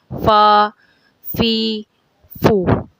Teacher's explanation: حروف فا اوپر والے دانتوں کے کنارے، اوپر والے جو دانت اس کے کنارے اور نیچے کے ہونٹوں کے اندر والے حصے سے ادا ہوتے ہیں